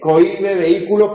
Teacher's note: En cohibe, en vehículo, en búho, hay hiato, porque la vocal acentuada es la cerrada o alta, y por lo tanto se indica mediante una tilde.